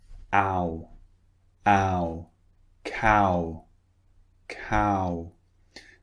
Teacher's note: So it starts quite wide and it finishes round.